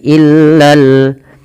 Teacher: illa bukan Ilal fasikun tapi illal lam yang kedua dibaca dengan jelas karena di sini ada alif lam qamariah